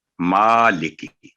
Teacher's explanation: آگے ہے مالکی، میم پر آپ دیکھ سکتے ہیں کھڑی زبر ہے، لیکن جلدی میں مالک یوم الدین، تو مالک یوم الدین نہیں ہے، مالکی، مالکی، یعنی صرف ما کی آواز 2 سیکنڈ لمبی، لی اور کی 1 سیکنڈ